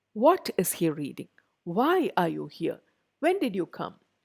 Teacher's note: so wh questions also take a falling intonation